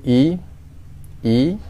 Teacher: kita jumpa hamzah baris bawah, kita bunyikan dia dengan kadar satu harakat terlebih dahulu